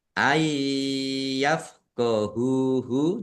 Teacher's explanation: Nun sukun bertemu dengan huruf iya, bacaan idgham bigunnah. Masuk dengan mendengung, yaitu langsung masuk ke huruf ya, ditandai yaknya ada tasdid dan dibaca mendengung, ditahan biar tampak mendengungnya.